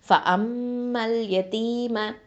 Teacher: இந்த மீம் ஷத்தா இருக்கா, தஷ்தீது பண்ணணும். அப்போது அங்கே என்ன பண்ணணும்? அக்மல் குன்னா கொடுக்கணும்.